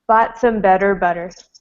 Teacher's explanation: with bought, I don't say the T at the end of that word.